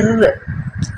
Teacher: நாக்கின் நுனி வருவதால் பிறக்க ர் வருடம் ஃபுல்லா போய் தொடலாம் அதாவது ர்ன்னு ஒரு மாதிரி வைப்ரேஷன்ல லைட்டா போய் டச் ஆயிட்டு வரும் சோ அந்த மாதிரி டச் ஆகி இந்த மேல்வாய் வந்து மேல்வாய் வந்து நாக்கினுடைய